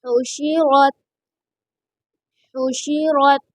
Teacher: ہا کو درمیان حلق سے ادا کریں گے، یہاں پر را کے اوپر زبر ہے، اس لیے را کو پر پڑھا جائے گا